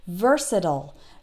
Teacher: American English speakers will tend to pronounce it like I just did versatile that last part sounds like ol